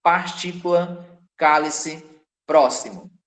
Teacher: É a palavra cuja sílaba tônica é a antepenúltima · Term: proparoxítonas